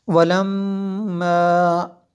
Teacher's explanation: میم شدد ہے اس لیے یہاں پہ غنہ کیا